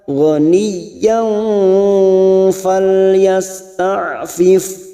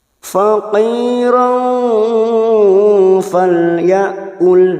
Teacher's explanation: ikhfa hakiki kita samarkan bunyi tanwin, fathah tanwin siap masuk ke huruf fa dan ditahan selama 3 harakat. Yang fa kita samarkan selama 3 harakat.